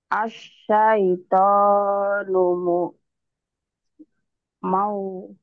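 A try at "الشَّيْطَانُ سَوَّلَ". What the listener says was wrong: Sawala. Kok jadi mau? Kan itu nggak ada mim. Mau apa? Ah, sawala.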